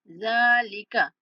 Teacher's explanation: जाल को नरमी के साथ पढ़ते हुए खींच के पढ़ेंगे